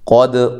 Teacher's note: قاف کو موٹا، دال کو ہلانا ہے اور ہلا کر قلقلہ کرنا ہے